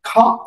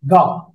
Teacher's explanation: খা বলার সময় বাতাস বেরোবে, গা বলার সময় বাতাস বেরোবে না, ভাইব্রেট হবে, সাউন্ড বেরোবে